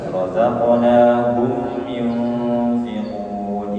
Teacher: nun sukun bertemu fa, ikhfa hakiki, ya, ikhfa hakiki, tapi ada kadar gunnah, ya, ada kadar gunnahnya di situ.